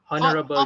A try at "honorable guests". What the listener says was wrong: Kejap lah. Kau kata honorable. H tu tak disebut. No. H tu tak disebut.